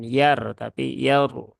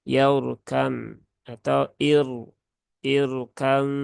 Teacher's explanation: jadi ini rnya harus dibaca dengan tafkhim